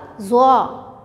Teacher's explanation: ज़बान की नोक और सनाया उलिया का सिरा